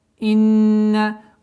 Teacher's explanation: Удержание нуна в размере двух огласовок.